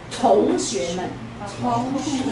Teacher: 同 is aspirated. There is wind over T.